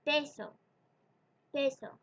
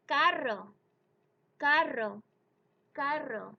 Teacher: When you pronounce a P, a T, or a hard C at the beginning of a word in Spanish, you don't blow out the puff of air like you do in English.